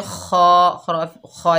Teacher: हा के ऊपर ज़बर है, आगे अलिफ खाली है, ये अलिफ मद्दा है, 1 अलिफ की मिक़दार खींच कर पढ़ेंगे हा फ़ी हा। ख़ा के ऊपर खड़ा ज़बर है, 1 अलिफ की मिक़दार खींच कर पढ़ेंगे ख़ा जो है रुफ़े मुस्ताला में से मोटा होगा